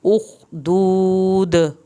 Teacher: اخدود، اخ پہ خا نہیں ہلے گا، دو یہاں پہ ہم نے واو ساکن کو کھینچا، آخر میں جب دود دال کریں گے تو دال پہ ہم کلکلا کریں گے۔